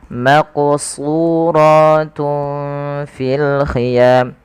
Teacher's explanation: Suyunya tebal karena huruf shad yaitu huruf isti'la. Hati-hati jangan terbaca dengan huruf sin jangan maqsurah tapi dia menebal